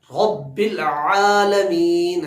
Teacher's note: عین کو بھی حلق سے نکالیں گے